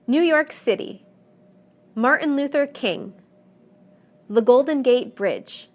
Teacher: the stress will always fall in the last segment